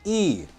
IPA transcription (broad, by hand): ɪː